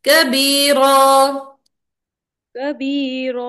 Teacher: और कबीरा में भी अलिफ को लंबा करेंगे